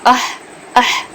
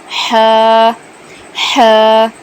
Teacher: اہ پر، تو وہاں سے ہا کا مخرج ہے۔ ہا کہاں سے ادا ہوگا؟ گلے کے درمیان کے حصے سے